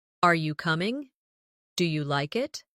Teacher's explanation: Another important element is intonation when asking questions. In English, our voice usually rises at the end of a yes or no question.